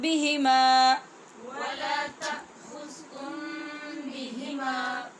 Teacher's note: میم کو پڑھنے کے بعد با نظر آ رہا ہے تو یہاں پہ آپ نے اخفا ہی کرنا ہے